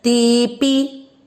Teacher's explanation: आपको यहाँ पर जैसे आपने सेकंड चरण में ये पी बोला, वैसे ही आप बोलेंगे ते पी। ते को खींचेंगे, पी को नहीं, क्योंकि पी की मात्रा छोटी है।